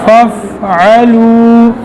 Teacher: نرمی کے ساتھ، اگر سختی کے ساتھ ادا کرو گے تو یہ پھر فا سے پا بن جائے گا